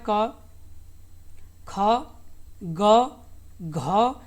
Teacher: पांचों आपके ये कंठ से बोले जाते हैं। किससे बोले जाते हैं, यानी कंठस्थ व्यंजन इन्हें कहा जाता है।